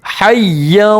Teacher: یا کے اوپر تشدید ہے، یا کو 2 مرتبہ پڑھیں گے، ایک مرتبہ پہلے والے حرف ہا سے ملا کر اور ایک مرتبہ 2 زبر کی تنوین کے ساتھ.